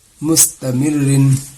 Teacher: را دو زیر رن، مستمر رن. رائے مشددہ کے نیچے دو زیر ہے، دو زیر رہے چاہے زیر رہے، اس کو باریک کر کے پڑھنی ہے